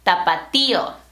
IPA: ta.pa.ˈti.o